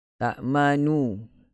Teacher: Mengekalkan baris dhammah pada huruf nun sambil merendahkan suara padanya dengan pantas. Maksudnya kita baca pada nu itu, baris nu, baris nu itu kita baca dengan pantas. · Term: bacaan raum